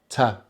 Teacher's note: This is a voiceless sound, which means we do not use our voice box to make this sound, so there's no vibration.